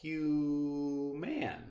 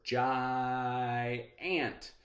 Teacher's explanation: i really hear that first syllable stretches out that's the open syllable